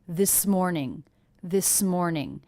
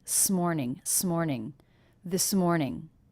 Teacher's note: One of the first things I notice is how much this S and M were connected.